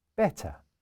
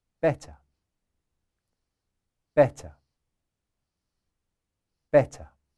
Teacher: The letter T is pronounced like in French, but with a small breath.